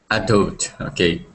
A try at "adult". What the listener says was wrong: Okay, use that or pronounce that L there, okay? Adult, adult.